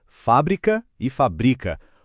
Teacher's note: Sem o acento, a sílaba forte muda para o bri e vira o verbo.